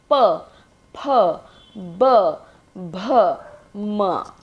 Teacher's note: फूल में ऊपर वाले दांत नीचे वाले होठ पर लगते हैं, जबकि हम इसे कह रहे हैं ओष्ठ व्यंजन। केवल ओठ मतलब होठों की भूमिका है इसमें, तो दोनों होठ आपस में जुड़ने चाहिए।